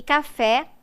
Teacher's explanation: o acento tônico recai na última sílaba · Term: oxítono